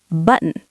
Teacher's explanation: And the American version, we say button. We kind of hold the N in our nose, button. So you have button and button.